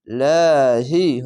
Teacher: হি বলে পড়তে হবে আল্লাহ লেখা থাকলে ডান পাশের অক্ষরটি দেখবেন যদি জের আছে তাহলে লা হি হবে পাতলা করে